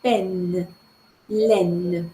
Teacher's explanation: Nous avons E ouvert dans les deux cas, mais ce n'est pas un E nasal, c'est un E oral, c'est le E ouvert, oui.